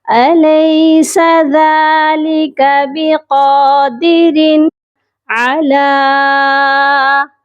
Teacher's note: ذَلِكَ بِقَادِرٍ، را پر غنہ نہیں ہوگا، اور قاف کو موٹا بھی کریں گے اور ایک الف کے برابر لمبا کریں گے · لام کے اوپر مد بھی ہے اور کھڑی زبر بھی ہے، لام کو ہم لمبا کر کے پڑھیں گے اور اس کے ساتھ ایک خالی یا ہے جو کہ نہیں پڑھی جائے گی۔